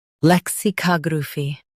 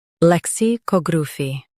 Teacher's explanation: Lek, si, cog, ru, fi, lexicography. US stresses ka, UK stresses cog.